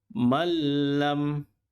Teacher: Tidak boleh baca malam. Bunyi huruf nun perlu dimasukkan kepada huruf lam tetapi tidak ada dengung.